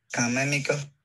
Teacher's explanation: You can see that in the first word, it ends with a high tone.